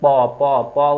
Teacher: প উচ্চারণ করতে দুই ঠোট একসাথে লাগতেছে · প উচ্চারণ করতে 2 ঠোঁট একসাথে লাগতেছে, তাহলে এইটা দুইটা হচ্ছে কি ওষ্ঠ ব্যঞ্জন, ঠিক আছে। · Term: অষ্ট ব্যঞ্জন